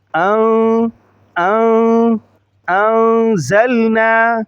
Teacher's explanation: حمزہ کو نون کے ساتھ ملاتے ہوئے غنہ کریں گے، ناک میں آواز لے جائیں گے